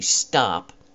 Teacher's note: like for the example the sound T when I say stop when I get to the T sound I stop all the air and I create a little explosion